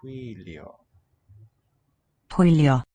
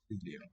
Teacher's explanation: The whistly quality of Hwylio. hwylio, the voiceless W.